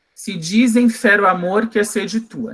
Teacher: Porque em amor, mor é a sílaba tônica, que está exatamente na 6ª sílaba do verso